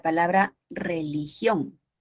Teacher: Las palabras agudas son aquellas que se caracterizan, uno, evidentemente porque llevan la mayor fuerza de voz en la última sílaba